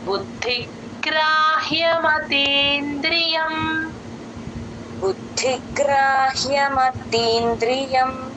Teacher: బుద్ధి బు కి ద ని జాయిన్ చేసి చెప్పాలి ద కింద ద వత్తు మహాప్రాణం ఉందండి అలాగే తర్వాత గ కింద రకారం బుద్ధిగ్రాహ్య బుద్ధిగ్రహ్య అని ప్లేన్ గా కాకుండా